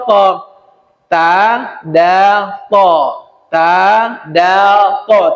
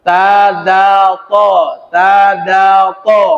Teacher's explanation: ujung lidah menembak ke Pangkal gigi seri bagian atas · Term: nitah